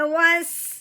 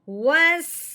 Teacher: کیونکہ الف اور لام نہیں ملانا ہے کیونکہ ان کے اوپر کچھ چیز لگی نہیں ہوئی اور زبر لگی ہوئی واؤ کے اوپر، تو اب ہم نے واؤ کو آگے سین کے ساتھ ملانا ہے اور اس کو سیٹی کی آواز بھی نکالنی ہے۔